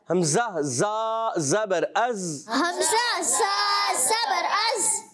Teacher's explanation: ये ज़ाल नहीं ज़ा है, ज़ा सीटी से